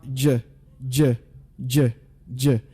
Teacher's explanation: Any vibration in that sound? Definitely there is. So that is a voiced sound.